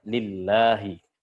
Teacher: kalau sebelumnya berharokat kasroh, harokat bawah, dia dibaca tipis